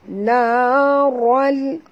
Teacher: Tanwin bertemu dengan la, masuk tanpa dengung, idgham bila gunah.